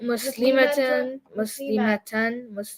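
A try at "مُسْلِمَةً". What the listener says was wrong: See, the ma was too long? You caught it?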